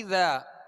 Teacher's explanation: اذا جاء نصر اللہ والفتح، اذا میں شروع کا جو حمزہ ہے اس کے نیچے زیر ہے، اس کو دراز نہیں کریں گے۔ اذا اب ذال کو ہم نے جو دراز کیا اس کے آگے الف ہے اور ایک الف کی مقدار اس کو کھینچ کر ادا کریں گے